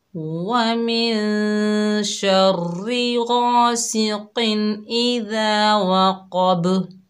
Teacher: قاف کو موٹا پڑھا، با میں ہم نے قلقلہ کیا، غین کو بھی موٹا کیا اور قاف کو بھی ہم نے موٹا پڑھا کیونکہ یہ حروف استعلاء میں سے ہیں۔